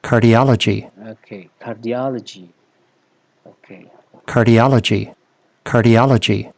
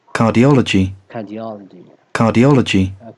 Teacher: Kalau American itu biasanya R sound itu terdengar ya, tapi kalau di British itu R-nya hilang ya.